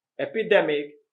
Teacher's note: epidemic and epidermis both have the stress on the d e